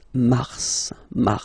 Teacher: then M okay so in a way it's an exception because normally final s is not pronounced in French okay we've got some exceptions and this one is one of them so Mar pronounce the final s